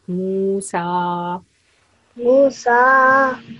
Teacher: we give 2 seconds to mu sound because it's vau matta, and 2 seconds to sa sound because it has vertical fatha